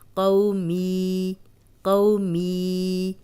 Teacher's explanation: آپ خود بھی اپنے دماغ پہ زور دیا کریں اور دیکھا کریں کہ یہ کیا چیز ہے، یہ رول کون سا ہے۔ جزم والی یا پیچھے زیر، تو یہ یا مدہ ہے، اس کو لمبا کریں گے 2 حرکات